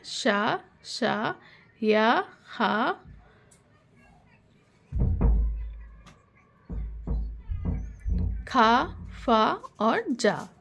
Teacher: जिन्हें बोलने में हमें थोड़ा ज्यादा संघर्ष या जिव्या को ज्यादा संघर्ष करना पड़ता है उन्हें हम संघर्षी या ऊष्म व्यंजन कहते हैं